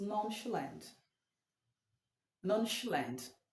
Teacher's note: the CH sound sh not chip